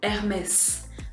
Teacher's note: don't forget that in French, the H is silent. You're never going to hear that H.